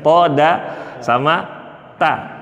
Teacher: Ujung lidah nempelnya ke pangkal gigi seri atas.